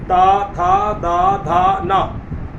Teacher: त वर्ग में क्या होगा कि हमारा जो जीभ है वो दांत से सटेगा आप बोल के देखिए त थ द धा न सट रहा है।